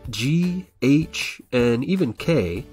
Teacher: you'll notice that they're pronounced in the same part of the mouth the back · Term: related initials